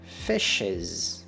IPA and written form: fɪʃɪz (Fish's)